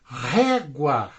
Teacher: é uma paroxítona, é a penúltima sílaba, é a mais forte